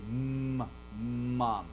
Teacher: An M, is what we call bilabial. You use your 2 lips, right? · So your breath goes up into your nasal cavity. And you can, it's nasally, right?